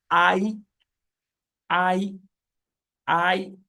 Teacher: the I sound is a combination of A and E sounds so when you blend them together when you Glide from a to e it gives you I and that gives you a deep thong right that is why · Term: diphthongs